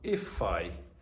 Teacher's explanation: So it sounds like this combination of words is divided like I and then fi. If I. So you're going to have problems with pronunciation of native speakers very often because of that combination.